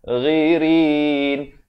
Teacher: Ghain makhrajnya dipangkal kerongkong. Ghirin. Dan ra baris bawah jadi nipis.